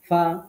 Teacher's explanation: নিচের ঠোঁটের পেটে উপরের দাঁতের আগার সাথে